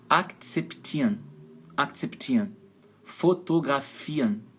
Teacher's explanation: o final REN soa como AN